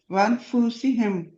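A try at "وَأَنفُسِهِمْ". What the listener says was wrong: फूसिहिम नहीं है, फा के आगे वाव नहीं लगानी, फुसिहिम।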